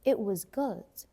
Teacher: we drop T sometimes, like in the word it. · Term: drop your T